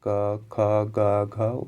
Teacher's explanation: इन सभी का उच्चारण दोस्तों ये कंठ से किया जाता है। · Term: कंठ वर्ण